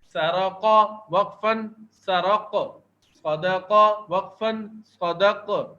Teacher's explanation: وہ ساکن ہونے کی صورت میں قلقلہ ہوتے ہیں، تو یہ قاف ہم وقف کرنے کی صورت میں ساکن پڑھ رہے ہیں، تو اس کا وقف کرتے ہوئے دیکھیں تھوڑی سی اس کی آواز ہل رہی ہے